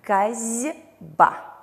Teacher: «Б» влияет на «с» и озвончает его. Таким образом происходит озвончение, и глухой «с» произносится как звонкий «з».